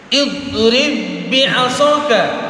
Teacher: huruf do itu bukan huruf qalqalah, makanya ditahan supaya tidak terjadi goncangan atau qalqalah, pantulan. Maka ba yang pertama itu tidak lagi berlaku karena sudah kita masukkan ke dalam ba yang kedua. · Huruf do-nya dimoncongkan karena termasuk huruf isti'la.